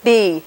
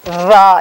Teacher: It's sort of, you can think of it as between a B and a V. It's continuous like English V, but it's bilabial like English B. So that's a bilabial voiced fricative.